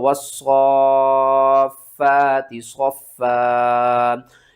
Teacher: इस स्वाद के ऊपर जो मद है ना, इसको आपने 5 अलिफ के बराबर खींच कर पढ़ना है